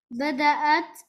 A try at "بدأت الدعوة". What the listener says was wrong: ما تقفش عليه. بدأت الدعوة.